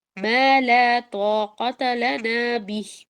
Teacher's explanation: طاقت کو چھوٹا رکھنا ہے اور لنا کو لمبا کرنا ہے